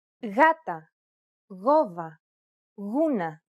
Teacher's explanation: it's pronounced like a loosely held G sound